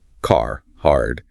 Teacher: In American English, the R is usually pronounced wherever it's spelled. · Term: roticity